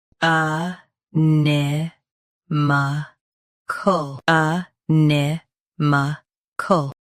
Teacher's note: Both US and UK have the same pronunciation of this word. Stress ni. Keep m soft and end with k clearly.